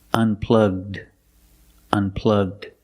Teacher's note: Link the g sound with the d.